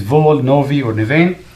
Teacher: if it's followed by a vowel, the vita or the B sound becomes a V